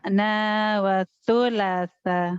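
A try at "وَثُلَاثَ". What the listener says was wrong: Itu bukan watu lasa. wasu atuh, jangan watu. Itu pengaruh dari bacaan Latin. Latin itu sa itu TSA.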